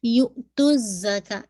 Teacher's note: یو پہ آپ میں جھٹکا دیں گے، حمزہ وِد سکون آلویز جرک کے ساتھ